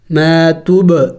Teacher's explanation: زبر ما، تابا پیش توب، ما توب، دیکھیں با ساکن ہے، با چونکہ حروف قلقلہ میں سے ہے اور ساکن بھی ہے تو اس پر قلقلہ کرنا ہوگا، یعنی ہلا کے پڑھنا ہوگا